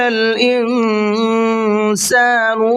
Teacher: وَقَالَ الْإِنسَانُ مَا لَهَا، وقال کے قاف کو پر کر کے پڑھیں گے، انسان کے نون کے اندر اخفا کریں گے، تھوڑا سا ناک میں آواز کو چھپائیں گے، اس لیے کہ یہاں پر یہ نون ساکن ہے اور نون ساکن کے بعد میں سین ہے، سین اخفا کے حرفوں میں سے ہے۔